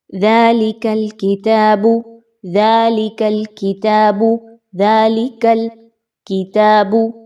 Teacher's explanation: زبان کا آخری حصہ اوپر سخت تالو کے ساتھ کاف کی ادائیگی کے دوران لگ رہا ہے۔